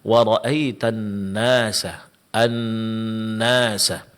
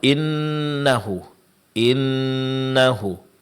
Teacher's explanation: Kemudian dengung di dalam ee surah An-Nasr hanya ada satu macam, yaitu dengung yang terjadi yang ada pada huruf nun yang bertasydid